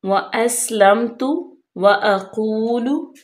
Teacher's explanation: सीन पे सीटी की आवाज, लम तू, मीम बिल्कुल जाहिर करेंगे।